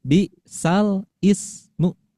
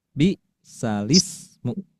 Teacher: Harokatnya ya digantikan ke bunyi huruf lam.